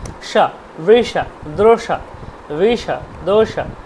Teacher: তারপরে দেখুন বৃষা, স দিয়ে মূর্ধন্য স, স একদম জিহ্বা ভাঁজ করে মাথার দিকে নিয়ে যান